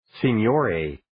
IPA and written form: sɪn'joʊreɪ (Signore)